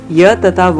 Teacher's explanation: ऐसे व्यंजन जिनके उच्चारण में हवा को बाहर निकलने में कोई संघर्ष ना करना पड़े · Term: संघर्ष हीन